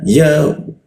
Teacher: Posisi ya di tengah lidah dia